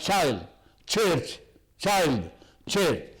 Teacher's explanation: And they are made where we call them palato-alveolar. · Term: affricates